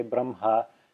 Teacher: that's the way most Indians say it they say Brom ha reversing the pronunciation of the H&M even though it's written Brahma